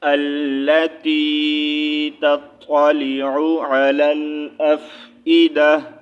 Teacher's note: تا کو ساکن کریں گے تو ہا ساؤنڈ آئے گا